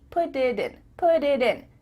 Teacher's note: your tongue is just tapping the top of your mouth to make a d put it in put it in instead of put it in · Because instead of spending the time to let the air come out of your mouth, your tongue is just tapping the top of your mouth to make a D.